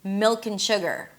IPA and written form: mɪlkenˈʃʊgər (Milk and sugar)